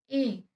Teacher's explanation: देखिए जो ध्वनि आ रही है वो कैसे आ रही है? एक तो कंठ से आ रही है और आपकी जो जीभ है वो तालु से टच हो रही है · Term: कंठ तालव्य